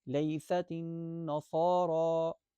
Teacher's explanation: وقالت الیہود لیست النصارى، یہاں پر را موٹی پڑھی جائے گی، صاد بھی موٹی پڑھی جائے گی. صاد کی موٹے ہونے کی وجہ سے را بھی موٹی پڑھی جائے گی